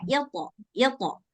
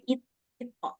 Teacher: Walaupun qalqalah to harus tetap tebal.